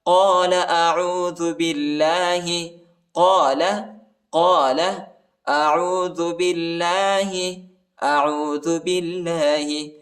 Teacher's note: ہزوا قال اعوذ باللہ، قال اعوذ باللہ، با کو لام کے ساتھ ملائیں گے، الف نہیں پڑھا جاتا، اور اللہ کے نام کو باریک پڑھنا ہے، نرم پڑھنا ہے